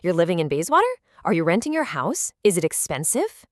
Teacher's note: By linking that fall-rising melody across all three steps, we signal that this is an interconnected line of questioning, rather than just three isolated, random thoughts.